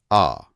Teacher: विवृत, जब मुंह पूरा खुला हो, जैसे आ। बिल्कुल, ये पूरा एक सिस्टम है।